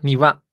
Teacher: La primera sílaba, la que está hasta la izquierda, es grave y todas las demás son altas.